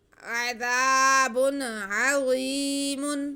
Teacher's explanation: عذاب، عذاب، با پہ تنوین ہے، اس کے بعد عین آ رہا ہے حروف ہلکی میں سے، تو یہاں پہ اظہار کا قاعدہ ہے، ہم تنوین کی آواز کو اور عین کو واضح کر کے پڑھیں گے